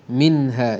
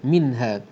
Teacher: nun mati bertemu dengan ha membawa hukum izhar halqi. Kita bacakan dengan terang dan jelas bunyi nun mati tersebut